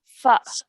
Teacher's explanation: Fa with a fatha joins onto the alif sakin with a soft jerk sound.